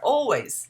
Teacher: You don't have to put any L sound there.